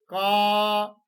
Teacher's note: वायु यहां पर दबाव डाल रही कंठ पर तो कंठ से ही वह ध्वनि निकल रही है